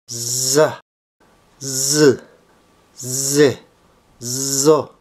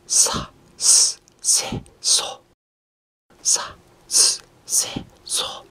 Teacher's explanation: Z tidak dapat dilafalkan kalau kita tidak keluarkan bunyi suara dari tenggorokan